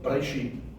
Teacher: You should actually pronunciate the word as if you don't even hear that E sound. So that you pronounce it as Bereshit.